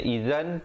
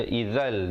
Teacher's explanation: masuk tanpa dengung, tanwin bertemu lam. Asalnya izan tapi baca izal di sini. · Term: idgham bila gunnah